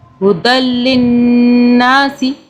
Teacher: نون پہ تشدید ہے، نون کو 2 سے 3 سیکنڈ کے لیے ہم نے ہولڈ کیا